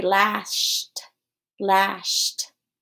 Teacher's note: notice that shh is an unvoiced air consonant